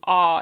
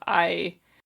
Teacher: the vowel sound in words like price and time are reshaped to aw instead of I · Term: price smoothing